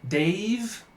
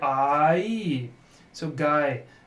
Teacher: so what's happening is the one vowel sound is sliding to the next vowel sound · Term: diphthongs